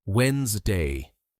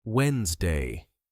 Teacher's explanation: The D is silent and the ne is reduced. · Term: silent letters